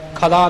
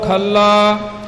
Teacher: ਇਹ ਪਾਠ ਕੱਸ ਕੇ ਥੋੜਾ ਜਿਹਾ ਅਦਕ ਲਾ ਕੇ ਹੋਵੇਗਾ